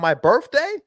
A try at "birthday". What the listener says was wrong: Birthday? You said birth with an F. birthday.